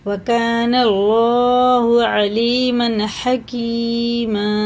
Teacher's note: اللہ کا لام کس سے ہے؟ زبر کے ساتھ ہے تو پر پڑھیں گے، یعنی منہ بھر کے موٹا کر کے